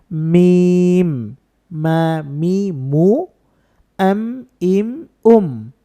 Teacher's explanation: একটা হরফ কিন্তু উচ্চারণের স্থানটা একটু খেয়াল করতে হবে এটা হচ্ছে এই হরফটা আমরা দুই ঠোঁট থেকে উচ্চারণ করব কিন্তু দুই ঠোঁটের শুকনা জায়গা থেকে উচ্চারণ করব